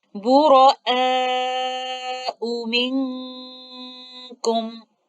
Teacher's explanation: So in that case, maddul wajib muttasil is 4 to 5 counts. So we will drop maddul badal and recite this with 4 to 5 counts of maddul wajib muttasil, which is the stronger mad here upon continuation.